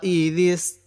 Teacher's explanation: এই দালটা একটু নরম করে পড়ব, সিনটা একটু শক্ত করে পড়ব।